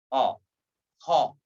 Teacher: Tidak boleh membacanya o. Seringkali kita jumpai ketika menyebut huruf ha, mulut ikut bulat o, ho.